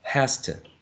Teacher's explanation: A regressive assimilation, the voiceless t is affecting the voiced z, making it voiceless. So it's devoicing the voiced z, right? · We're reducing the u for schwa, and we can see that instead of z, we're using s.